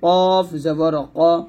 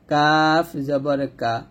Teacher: কফটা মোটা হয় এবং কাফটা পাতলা হয় যেমন এটা কফ উচ্চারণ কর আওয়াজ হবে পাল্টা আওয়াজ মত মোটা